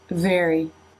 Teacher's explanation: here is the eh, but the tongue is not completely forward, as it is already moving back for the R sound